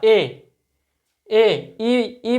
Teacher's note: इ से थोड़ा सा ज्यादा मुंह ए में खुलता है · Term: अर्ध संवृत स्वर